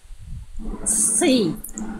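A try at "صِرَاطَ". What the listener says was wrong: Lagi, angkat pangkal lidahnya. Sekali lagi tinggal nanti ditebalkan lagi huruf shadnya. Jadi ketika Bunda lafalkan ke dalam ayat, kadar ketebalannya berkurang. Sli, artinya tetap tebal.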